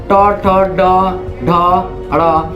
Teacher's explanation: इससे ये क्या है, माने ट ही क्यों, ट वर्ग के जितना भी है, ठ भी कहिए उलटना पड़ेगा, ड भी कहिए, ट ठ ड ढ ड़। तो आप इसमें जीभ को उलटते हैं, यानी मूर्धा से इसमें आप बोल पाते हैं।